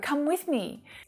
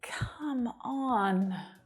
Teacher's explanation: I'm adding lots of extra emphasis as well to drag out the word. When you say it like that, it really shows that you're frustrated and you're annoyed.